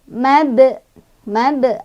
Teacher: Cara bacanya dipantulkan tapi pantulannya kecil karena kita langsung baca ke huruf berikutnya ya. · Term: qalqalah sugro